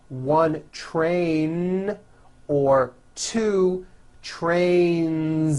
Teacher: Two trains with a voiced Z ending.